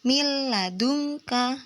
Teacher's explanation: langsung masuk ke huruf berikutnya tapi tanpa dibaca dengung